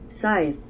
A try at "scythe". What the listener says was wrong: she didn't even pronounce the th